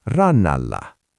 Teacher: the T is crushed, and the N just doubles itself.